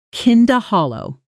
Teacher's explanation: In careful slow speech, you'd hear kind of, hollow as three distinct words, but naturally kind of almost always compresses into something closer to kinda with the D and of blending and softening